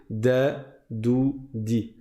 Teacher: c'est le bout de la langue qui va toucher avec le palais vers le l'avant du palais